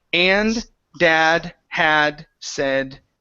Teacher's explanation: you did not pronounce the D's on any of those four words